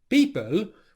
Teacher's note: And the only noise that happens as you release the P sound is just simply silent air exploding out. So Ronaldo here has said people, where it sounds slightly more like a B than the English P.